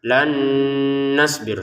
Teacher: Di sini kita masukkan nun yang pertama pada nun yang kedua. Disertai dengungan. Jangan lupa dengungannya ya.